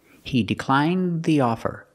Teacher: the tongue goes up makes a stop D but it links together with the th so you don't really hear it